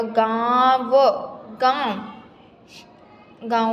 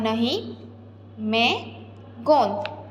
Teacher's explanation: हमें लगता है कि ध्वनि मुंह और नाक दोनों से निकल रही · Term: अनुनासिक